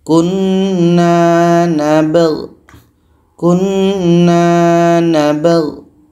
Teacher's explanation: Nab ini dibaca, gho pun dibaca. Ba hukumnya qalqalah, ada pantulan. G pun harus dibaca jelas. · di sini ada dua huruf mati ba dengan go. Kalau berhenti, dua-duanya tetap dibaca.